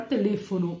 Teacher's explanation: o E é um pouquinho mais fechado, o O também